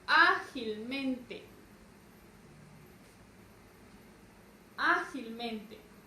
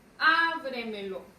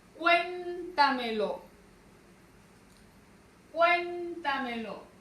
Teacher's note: palabras sobreesdrújulas, que llevan su mayor fuerza de voz y su tilde en una sílaba antes de la antepenúltima